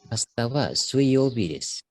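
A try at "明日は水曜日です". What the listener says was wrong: Asa suyobi, betul.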